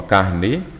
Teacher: carnê, sílaba forte é a última. Então ela é uma palavra oxítona